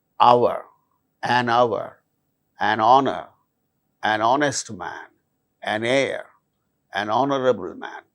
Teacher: In all these cases, these words begin with H, which is a consonant letter, but H becomes silent and these words produce initially vowel sound. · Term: silent H